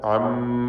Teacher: ഇതിൽ മീം മുശദ്ദദക്ക് മണിക്കണം, ഉന്നത്ത് കൊടുക്കുക.